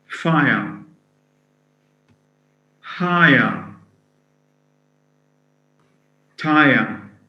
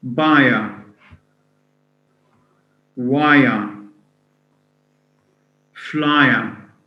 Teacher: So in each case, we're having the diphthong I plus a schwa. Buyer, wire, flyer, fly plus schwa.